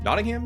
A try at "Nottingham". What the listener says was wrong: Nottingham, because that's pronouncing the H. You have to be all cool and local and say Nottingham.